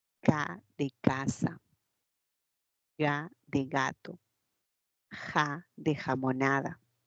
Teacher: el Pos dorso de la lengua se tiene que acercar a la zona velar y ahí ahí queda porque a la úvula no llegamos nosotros · Y la parte velar, velar, en la parte velar se va a producir el sonido K de casa, Ga de gato, Ja de jamonada. El postdorso de la lengua se tiene que acercar a la zona velar.